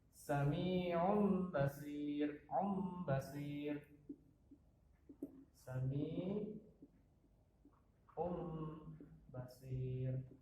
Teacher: maka nun sukun atau tanwin diubah menjadi mim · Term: iqlab